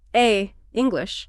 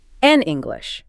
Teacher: It's a glottal stop. It sounds choppy. But an English teacher lets the words flow together smoothly.